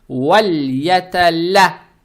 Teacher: Далее стоит буква лям с фатхой. Фатха приобретает оттенок я.